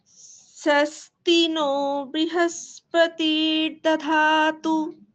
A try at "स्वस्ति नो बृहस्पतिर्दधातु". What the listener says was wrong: স্বস্তি নো বৃহস্পতির দধাতু। ব্রু ব্রি বলা যাবে না। বয় রিতে ব্রি উচ্চারণ হয়, কিন্তু যখন আপনারা এইভাবে উচ্চারণ করবেন, এই কৃষ্ণ যজুর্বেদের মতন উচ্চারণ করবেন, সেখানে রিকারকে রু উচ্চারণ করতে হবে। ব্রু। স্বস্তি নো বৃহস্পতি। স্বস্তি নো বৃহস্পতির দধাতু।